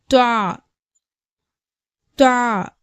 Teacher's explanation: துவாவுடைய மஹரஜ் பிறப்பிடம் தா தால் போன்ற எழுத்துக்களுடைய மஹரஜ் பிறப்பிடம் மாதிரியே நம்ம நாக்கினுடைய நுனி நம்மளுடைய மேற்பற்களுடைய வேரை படும்பொழுது துவாவுடைய சப்தம் வெளிப்படுகிறது